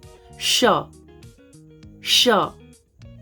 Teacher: जब भी इस श का आप उच्चारण करेंगे, ये तालव्य स है, तालु से यानी श, श। और अगला है, इसको बोलते हैं मूर्धन्य स, और इसका उच्चारण होता है श। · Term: तालव्य श